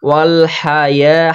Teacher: হা কিন্তু স্পষ্ট করে উচ্চারণ করতে হবে, কারণ হলক বা কণ্ঠনালীর মাঝখান হতে উচ্চারিত হয়